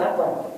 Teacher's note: tidak boleh menambahkan huruf wawu antara Allah dan akbar, berharokat ataupun sukun